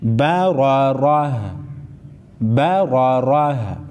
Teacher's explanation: وقف کی صورت میں گولتا کو ہا پڑھیں گے